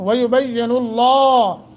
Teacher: लफ्ज़ अल्लाह को मुँह भर के पढ़ेंगे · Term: तख़फ़ीम